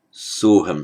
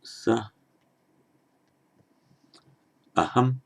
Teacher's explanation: a word ending in the a with visarga plus another word beginning with an a, that coalesces into o, and the initial a of the following word disappears